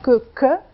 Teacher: qui est une occlusive vélaire